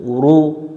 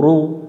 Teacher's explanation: ও র পেশ রু, রু, এটা রু পাতলা করা যাবে না, ও রু মোটা করে নেব আমরা